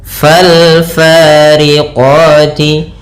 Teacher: alif lam qamariyah, yaitu alif dan lamnya ditulis dan dibaca dengan jelas suara lamnya